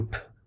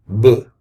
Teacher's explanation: When you do p, like that initial p sound, your vocal cords, they won't move, right? If you hold your hand right here in your vocal cords. But if you make a voiced consonant, like b, you can feel it